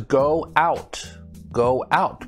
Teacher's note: sounds like we're putting a w in between the two o's